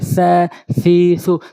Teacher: সা জিব্বার আগা, দাঁতের আগা, সা হালকা নরম করে